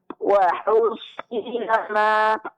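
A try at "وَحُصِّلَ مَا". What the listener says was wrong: Nah, huruf sad tasydidnya jelaskan dan lebih ditebalkan Bu. Coba diulangi. Nah, itu yang perlu dilatih.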